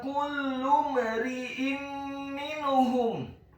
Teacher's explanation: Kata kullu mari'in minhum, huruf kafnya dibaca tipis, dhammah 1 harokat. Huruf lamnya dibaca tipis, ditasydidkan, ditekankan, dhammah 1 harokat